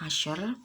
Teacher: Shin makharijul hurufnya itu ada di wasatul lisan, tengah-tengah lidah, dan sifat-sifatnya itu infitah, ismat, tafasyi, hams, rikhwah, dan istifal.